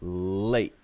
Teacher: sound where it stops so uh you could say late but you could also say late without saying the t at all and just stop it and that's very natural sounding too late and then stop the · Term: special type of t sound